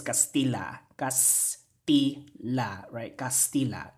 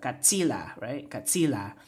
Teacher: There's a morphological process that was called metathesis that happened here, where the T and the S switch spots